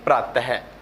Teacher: विसर्ग का उच्चारण ह की तरह होता है